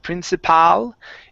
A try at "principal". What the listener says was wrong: It's a lazy sound here you're barely opening up your mouth